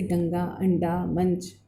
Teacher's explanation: अनुस्वार नासिक के व्यंजन है, अर्थात इसका उच्चारण नाक से किया जाता है। ठीक है, इसका चिन्ह उनकी बिंदी होती है, स्वर या व्यंजन के ऊपर लगाया जाता है, जैसे गंगा, अंडा, मंच आदि, है ना।